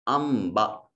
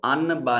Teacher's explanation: انبتت نون ساکن کے بعد با حرف اقلاب ایک حرف ہے، جب بھی کہیں نون ساکن کے بعد با اسی کلمہ میں ہو یا اگلے کلمہ میں ہو تو نون کو چھوٹی میم سے بدل کر پڑھتے ہیں